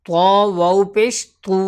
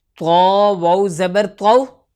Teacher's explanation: طرح فرق ہوتا ہے۔ اسی طریقے سے تو واو پیش تو، واو مدہ کو تھوڑا سا کھینچ کے پڑھا جاتا ہے، یعنی کہ ایک الف کے برابر ، اور ایک الف کی مقدار ایک انگلی کو کھولنا یا